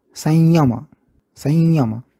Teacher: आणखी एक उच्चार कानावर पडतो, तो म्हणजे अनुनासिक य सारखा संयम.